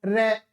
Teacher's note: प्रंप मतलब जिससे थोड़ा कंपन सा पैदा होता हो र तो र में र हमारा लुड़क सा जाता है · जीभ का जो नोकीला भाग है वो लुढ़कता है, एकदम गोल होता है, तो उसको क्या कहा गया, लुंठित।